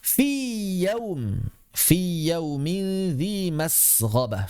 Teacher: ya yang pertama mad di mana keluarnya jauf. Dia huruf vokal